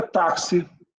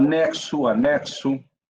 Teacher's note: Esse X tem som de KS, a gente chama isso de dífono.